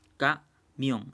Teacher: Por ejemplo, la palabra camión se separa camión en dos sílabas. Entonces, y si se dan cuenta, la mayor fuerza de voz está en la sílaba mión. Entonces, esta palabra es aguda.